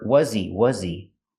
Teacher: the H in he is silent because he is not a stressed word.